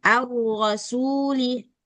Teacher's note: sekali aja rnya tikrarnya jangan kebanyakan getarannya